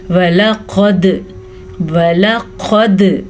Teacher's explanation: وَلَقَدْ واو اور لام لمبا نہیں کرنا جبکہ دال پہ کلکلا کرنا ہے اور قاف کو موٹا کر کے پڑھنا ہے